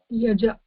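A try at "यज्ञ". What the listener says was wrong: Yaja. Yaja, and there is a nya. So many times this is confused, as in many areas it is pronounced yagya, something like that, yagya or whatever. So ga. So But if we understand again the position and the way to pronounce it, it will be easy.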